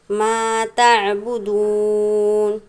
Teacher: جو عین نظر آ رہا ہے اس کو ہم نے نرمی کے ساتھ ادا کرنا ہے، نہ کہ جھٹکا دے کر پڑھنا ہے۔